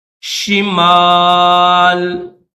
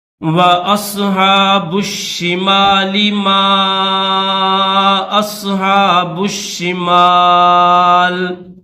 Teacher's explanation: لام کے نیچے زیر ہے، یہاں پر وقف کریں گے تو اس زیر کو نہیں پڑھیں گے، لام کو جزم کے ساتھ پڑھیں گے، صرف لام کی آواز پیدا کریں گے، شمال، اس طرح۔